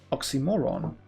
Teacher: so you want to stress on the second to last syllable